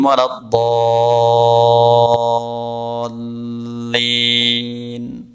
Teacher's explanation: Huruf dod ini ada letaknya, lidah ditempelkan di gigi geraham. Tapi bukan berarti harus keluar dari gigi.